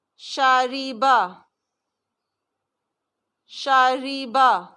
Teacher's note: شاریبا را باریک ہے